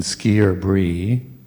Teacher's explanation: I is pronounced as I, not as an I, but as an E, a long E, as in ski or brie.